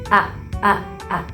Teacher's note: ketika pita suara itu tertutup lalu rapat, maka udara itu mendesak keluar, jadi akan muncul suara seperti hamzah, a, begitu.